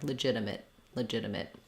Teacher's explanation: we don't say legitimate with a strong T at the end. We often just use a stop T there.